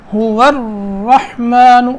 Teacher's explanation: را کو پکڑنا تھوڑی سی دیر لگانی ہے کیونکہ حرف مشدد ہے، اس پہ 2 لفظوں کی دیر لگے گی بس.